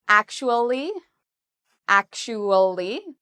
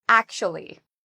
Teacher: Some people say it in 4 syllables, actually, actually. Other people say it in 3 syllables